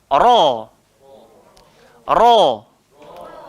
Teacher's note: huruf ra ini tempat keluar dia hujung lidah langgar langit atas. Tinggal lagi dia tidak melibatkan bibir, maka kita tak berhajat kepada muncung.